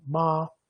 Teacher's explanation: Então é a sílaba, os segmentos ma, o ma mais o a, que vai ter justamente o tom 1. E qual que é o tom 1? O tom alto e estático